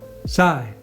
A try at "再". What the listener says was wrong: Okay, that's not, maybe do it lighter. Okay, not much S there. So not that strong on the S, right? But it's firm. Yeah. So your tongue, right? Touch a little bit